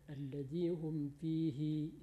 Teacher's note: Banya tidak panjang itu, dipendekkan saja. Kemudian alladzi hum fihi, hinya dipendekkan